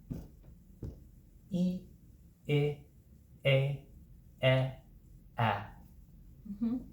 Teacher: Each sound, the jaw drops progressively lower.